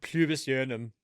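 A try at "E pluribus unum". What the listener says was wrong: Pubis. I know it's pluribus, but it sounded like you said pubis. No, it's got an L in it.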